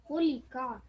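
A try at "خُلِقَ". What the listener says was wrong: Okay, just be careful that you don't make that into a qa. You know, you're stretching a tiny bit too long, yeah? Khuliqa.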